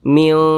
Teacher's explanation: jauh tidak terlalu dekat tapi di tengah-tengah maka dikatakan ausat maka cara membacanya itu disamarkan kemudian juga didengungkan atau digunahkan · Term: ikhfa Hakiki ausat